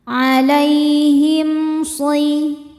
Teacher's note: Him ada izhar syafawi karena mim sukun tidak menghadapi mim atau ba. Di sini menghadapi shad. Cara bacanya mim dibaca jelas.